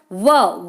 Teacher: व को बोलते हैं दंतोष्ठ, दंत और होठ से बोले जाने वाले